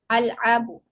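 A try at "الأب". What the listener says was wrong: Ah, itu masih terdengar seperti ain ya. Al-abu. A-nya pendek. Al-abu.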